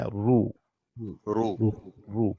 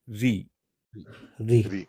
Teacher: زیر ہو تو مرقق، ری